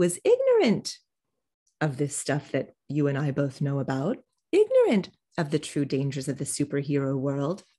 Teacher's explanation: now ignorant is popping up to take the spotlight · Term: de-accented